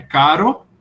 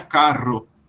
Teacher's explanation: você fica caro uma vibração a língua sua balança uma vez · você tinha caro, uma vibração, a língua só balança uma vez, caro, e você tinha carro, 2 vibrações. Por isso ela era chamada dupla.